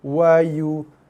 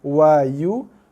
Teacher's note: Itu nak kena hati-hati. So kita bunyikan U tu dengan kadar 1 harakat dulu. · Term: dengung yang berdengung ikhfa